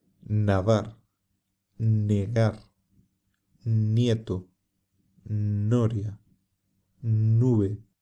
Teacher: se pronuncia de forma parecida a la m pero se abre la boca y se apoya la lengua justo detrás de los dientes superiores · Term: letra n